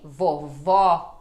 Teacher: temos o som de ó ele aberto né como em vovó